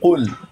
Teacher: اب دیکھیے قل مفخم منہ بھر کے قل